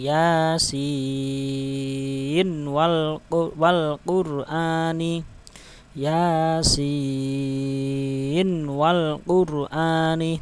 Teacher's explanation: Ya, harus dibaca izhar, enggak boleh dibaca idgham dengung tadi ya. Tidak idgham bi gunnah, tak boleh dibaca gunnah dengung